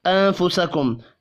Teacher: نون ساکن کے بعد فا ہے، اخفاء حقیقی ہوگا